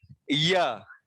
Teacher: जीभ पास से गुजरता है लेकिन छूता नहीं है